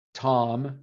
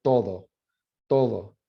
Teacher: the name tom and then say the word todo so tom your tongue in english is hitting your alveolar ridge that back of your gums that bony like wrinkly part behind your behind your teeth whereas